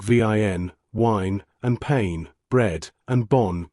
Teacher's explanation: The nasal vowels, the sounds in words like vin, wine, and pain, bread, and bon, good, have no close equivalents in English or German, and they give French its characteristic resonant quality, a slight buzzing depth that seems to come from somewhere inside the speaker rather than from the surface of the mouth alone.